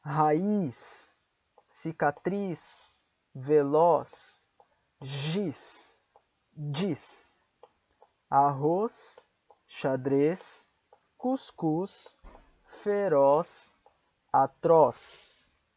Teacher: Se a letra Z estiver no final da palavra, ela soará como um S do espanhol.